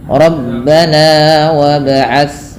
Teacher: Tapi tidak boleh terlalu panjang. Untuk mad tabi'i sendiri cukup 2 harakat saja.